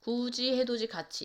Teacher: 디귿과 티귿이 이를 만나서 지읒, 치읒으로 바뀌는 건데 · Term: 구개음화